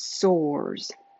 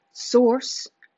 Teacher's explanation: One little voiced /z/ instead of unvoiced /s/ can change the meaning of the whole sentence.